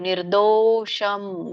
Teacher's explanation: ನಿರ್ದೋಷಂ ದ ಕೆ ದೊಡ್ಡ ಓ ಕೂಡಿದೆ ಸ್ವರ ದೀರ್ಘ ಇದೆ ಅರ್ಕವಳಿ ಇದೆ ಸೋ ನಿ ಆದಮೇಲೆ ರ ಹೇಳಿ ಆಮೇಲೆ ದೋ ಎಳಿಬೇಕು